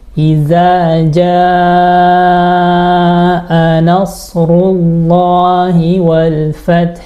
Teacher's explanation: mad wajib muttasil itu harusnya dibaca 4 sampai 5 harakat jadi panjang